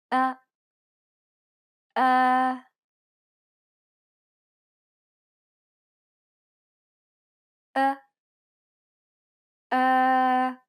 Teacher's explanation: it's similar to the o sound in the word boring but with unrounded lips